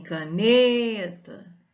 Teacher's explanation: em caneta a sílaba tônica é a penúltima é uma palavra paroxítona